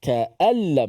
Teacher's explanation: Nun tu hanya ada pada tulisan saja, pada bacaan tidak ada sama sekali.